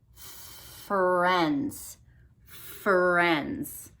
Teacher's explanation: I don't hear a voice so my voice is off for the F sound